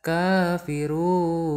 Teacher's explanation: Nah biasanya kalau ada mad di akhir itu mad arid disukun. Kalian baca panjang 2 ketukan.